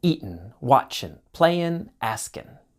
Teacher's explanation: Oftentimes in spoken English, the G sound disappears. So eatin', watchin', playin', askin'.